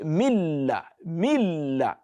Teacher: When you listen to milla, it is as if the nun has been totally deleted. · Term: idgham kamil